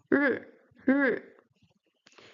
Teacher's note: The R sound in Chinese is retroflex, so you have to curve your tongue backwards when you pronounce it.